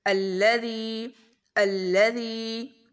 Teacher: ذی کو لمبا کریں گے، یہاں پر یا مدہ ہے اور ذال کو نرمی سے ادا کریں گے.